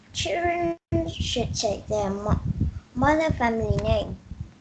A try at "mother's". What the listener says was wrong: Oh, S sound, please. Yes, their mother's family name.